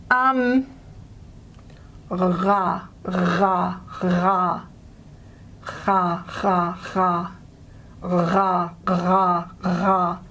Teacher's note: A fricated version, a properly fricated version of the letter R. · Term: voiced velar